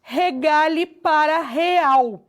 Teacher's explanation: Supressão da consoante. Com relação à consoante G, né, o G, nós tivemos também uma síncope de regale para real.